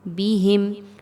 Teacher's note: میم ساکن کے بعد واو آ رہی ہے، اظہار شفوی کیا جائے گا